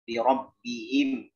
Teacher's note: Birabbihim hi di bawah di pangkal tenggorokan kita, bukan birabbihim him ya, itu masuk ke khaisyah.